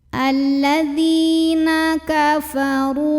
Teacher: ra ini dibaca dengan menebalkannya. Pangkal lidah kita dinaikkan, diangkat. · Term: tafkhim